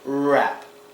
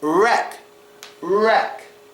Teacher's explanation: the hard r with the protruding of the lips first